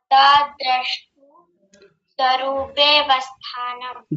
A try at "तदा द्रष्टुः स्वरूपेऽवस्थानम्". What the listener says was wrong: द्रष्टुः, विसर्ग भी है, द्रष्टु नहीं, द्रष्टुः।